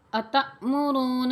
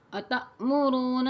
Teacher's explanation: أَتَأْمُرُونَ، حمزہ زبر آ، تا حمزہ زبر تا، اسے تھوڑا سا جھٹکا دے کے اس کے بعد آپ نے پڑھنا ہے